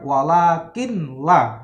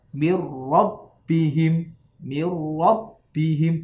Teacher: dibaca tidak dengung, ya, tidak dengan senggau, tidak dengan suara mendengung atau tidak suara dengan hidung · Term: idgham bila gunnah